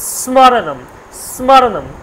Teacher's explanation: শীষ ধ্বনির মত নির্গত হচ্ছে এজন্য বলছে একে উষ্ম বর্ণ বলে শীষ ধ্বনি বলে যাই হোক অনেক কিছু বলে তাহলে স্মরণম স্মরণম সটা কিন্তু হালকা